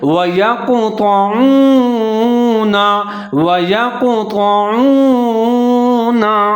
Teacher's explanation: تو کو موٹا پڑھنا ہے، عین کے اوپر پیش ہے، واو ساکن ہے، عین اور واو دونوں کو ملا کے پڑھیں گے ، نون کے اوپر زبر ہے، سنیے، وَيَقْطَعُونَ وَيَقْطَعُونَ، آگے ہے · ہے، یا کے اوپر زبر ہے، کاف ساکن ہے، یا اور کاف دونوں کو ملا کے پڑھیں گے اور کلکلا کریں گے کاف کے اوپر۔